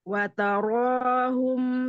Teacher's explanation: Untuk ro fathah, kemudian ro doma ditebalkan, pangkal lidah naik ke langit-langit.